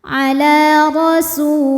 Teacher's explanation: Ala rasu, huruf ra dibunyikan secara tafkhim karena harokatnya di atas, maka ra tebal. Ala rasu, su mad tabi'i dhahiri, sebab ada waw sukun didahului harokat dhammah, maka sin dibaca panjang 2 harokat.